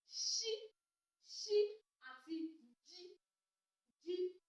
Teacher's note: Ó ní àwọn ìró tí a pè nígbà tí iwájú ahọ́n kan àjà ẹnu àti èrìgì wa. Àwọn ni ṣí, ṣí àti jí, jí. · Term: Afàjàfèrìgìpè